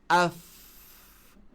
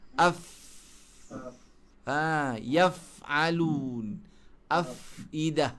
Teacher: Jangan tahan suara huruf fa. Huruf fa ni sifat dia rahawah. Lepas suara. Lepas udara.